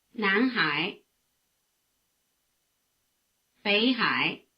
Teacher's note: notice that the tone diagrams are the same for both names before the low tone of high the low tone of bay becomes a rising tone indistinguishable from the rising tone of nan